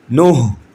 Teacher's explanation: یہ ہا کی آواز سینے سے ادا ہوگی